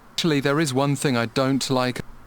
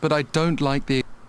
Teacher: Actually, there is one thing I don't like Okay, so notice here, I don't like. He stresses the don't.